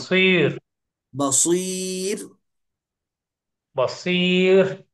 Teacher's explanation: स्वाद मोटा, रा बारीक।